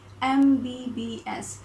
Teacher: names they start with letter m which is a consonant but when we pronounce them we get this a sound in the beginning right mbbs so this a is a vowel